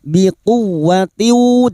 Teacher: masuk ke huruf wau yang bertasdid hanya masuk tanpa ditahan lama-lama tanpa mendengung